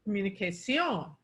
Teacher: It's a high tone on O.